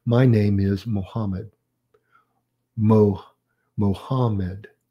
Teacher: the pitch of your voice as well as some stress lowers at the end of the sentence and this falling intonation is used at the end of statements